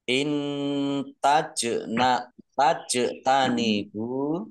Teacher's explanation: In tajna tajtanibu bertemu huruf ta, bacaan ikhfa, ya, dibaca samar-samar. Kemudian jim sukun, bacaan kol-kolah, dibaca memantul, ditampakkan pantulannya